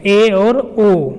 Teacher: है संवृत स्वर के उदाहरण है आगे अर्ध संवृत स्वर तो इन स्वरों के उच्चारण में मुख संवृत स्वरों से थोड़ा अधिक खुलता है